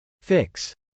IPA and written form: fˈɪks (fix)